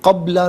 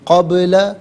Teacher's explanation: یہاں چونکہ یہ حرف قلقلہ ہے تو آواز لوٹتی بھی محسوس ہونی چاہیے